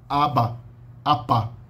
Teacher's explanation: Você só ouve o apá, o P do apá, se tiver uma vogal depois, pelo menos. Antes, ap você pode ouvir um pouco, mas depois esse ap, né?